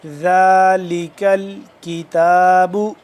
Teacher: ذال کو نرمی سے پڑھیں، دو دانتوں کے درمیان زبان کو تھوڑا سا باہر کی طرف نکال کے، اور ذال کھڑا زبر ذا ایک الف کے برابر لمبا ہوگا۔